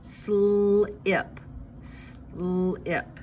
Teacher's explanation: This word has 2 consonants at the beginning, and the letters S and L make a blend. They blend together, but you still hear each individual sounds.